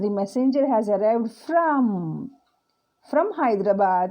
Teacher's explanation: we are emphasizing that the person is coming from hyderabad and not going to hyderabad